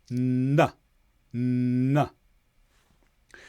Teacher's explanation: A similar sound is n. Here, your tongue blocks all of the air, but it's touching behind your teeth.